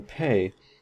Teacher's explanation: However, when we transcribe these and we look at the properties, the pay, or the P in pay, is aspirated. It has this little H up here that we transcribe it with because we have a puff of air.